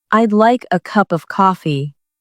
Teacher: The stress falls on like cup and coffee.